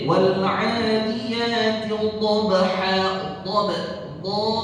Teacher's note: Harus itbaq. Membaca huruf dha itu harus itbaq, harus sampai menebalkan suara huruf dha.